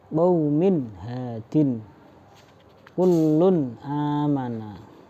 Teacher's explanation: dibaca dengan jelas tidak dengung tidak samar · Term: izhar halqi